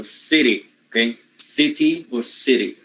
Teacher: When the t changes into flap-er, the flap-er is voiced.